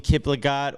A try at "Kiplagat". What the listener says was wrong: When you pronounce Kiplingat, you have a really soft N in the middle of it. You make it sound like Kiplagat.